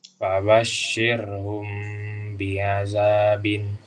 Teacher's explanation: Cara bacanya itu ada beberapa tahap. Pertama, mim sukun kalau bertemu ba itu disamarkan, ditutup mulutnya, di bibirnya, disamarkan aja, terus diidgham, didengungkan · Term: Ikhfa syafawi